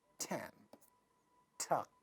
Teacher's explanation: because ta sound is at the initial position of a word so it's going to be aspirated and this word is going to sound tan tuck this is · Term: aspiration